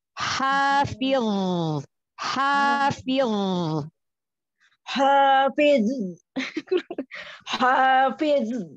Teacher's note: huruf dho kan dia punya sifatnya isti'la ya, huruf tebal ya. terangkat pangkal lidah, lalu suara naik ke atas, ya, langit-langit atas, lalu dho juga punya sifat itobak, terkepung, jadi gendutin suaranya.